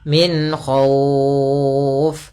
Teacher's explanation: Nah, izhar di sini adalah izhar halqi. Yaitu suara nunnya kita baca dengan jelas tanpa ditahan. Karena datang setelah huruf nun ada huruf k yang di mana kha termasuk huruf yang makhrajnya keluar daripada tenggorokan kita.